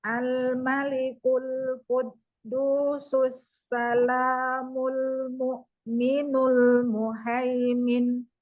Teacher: domah mul mu, bukan mo tapi mu, al-mu'min. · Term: domah sempurna